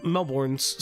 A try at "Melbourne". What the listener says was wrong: Melbourne. You're saying born, it's burn.